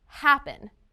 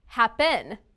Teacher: The stressed syllable sounds longer than the unstressed syllable. Is the first or second syllable stressed in the verb happen? Listen again. Happen. It's the first syllable, right?